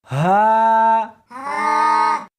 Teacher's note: اس حرف کو سینے کے اندر سے نکالنا ہے